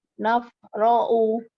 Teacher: Pertama kofnya harus qalqalah. Ya, terus u-nya itu nggak ada waw sukun sebelahnya. Dia cuma berdiri di atas waw-nya saja. Jadi u-nya pendek.